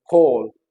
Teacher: हल्का सा जो है वो ओ का साउंड होता है, कंप्लीट ओ नहीं , हल्का सा जो है वो ओ, ओ, ठीक है। एंड